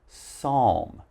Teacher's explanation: Remember, we have a silent ‘p’, so just pronounce the ‘s’.